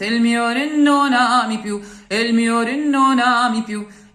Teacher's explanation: the R of re, king, is not to be pronounced almost.